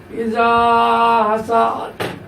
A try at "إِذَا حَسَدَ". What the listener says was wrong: হাসাদ হাসাদ এমনি সার উপরে মাত করা যাবে না।